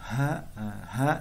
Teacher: ha ini dari pangkal kerongkongan ya, pangkalnya ya. Paling bawah di kerongkongan